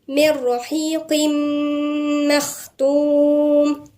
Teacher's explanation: هنا لما قلنا ادغام كامل، اول ما تعرفوا اسم ادغام كامل يعني التنوين الجسم والغنة تبعها الاتنين ادغموا في الميم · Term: ادغام كامل بغنة